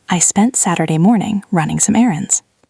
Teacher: I spent Saturday morning, then a small pause. Running some errands.